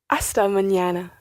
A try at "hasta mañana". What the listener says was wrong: Hasta mañana. Muy bien.